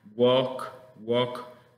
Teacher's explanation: no se pronuncia la l en este caso se dice Walk